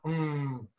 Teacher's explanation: we're actually making the M sound which is more in the front